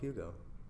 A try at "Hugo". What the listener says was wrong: Yeah, but you didn't pronounce it exactly like that. The H was like kind of silent.